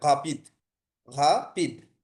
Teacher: আর হচ্ছে যখন শব্দের ক্ষেত্রে শুরু হয় প্রথমে তখন এটা অনেকটা কাছাকাছি গ এর মতো উচ্চারণ হয়